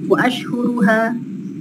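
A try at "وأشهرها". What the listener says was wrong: wa ashharu bukan ashhur. Kalau ashhur zaman dari syahrun. Ashharuha.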